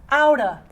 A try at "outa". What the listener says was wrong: Don't say of, say outa.